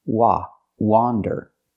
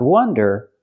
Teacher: Again, it has the open ah sound like hot and stop.